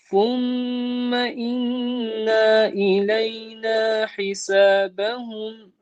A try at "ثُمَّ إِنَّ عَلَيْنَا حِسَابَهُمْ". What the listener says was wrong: Again, here the inna, we're keeping it short. ثم إن علينا حسابهم